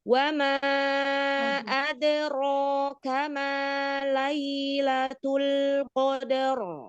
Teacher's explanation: huruf dal itu ada qalqalah ketika dia di tengah, maka dia pantulannya lembut aja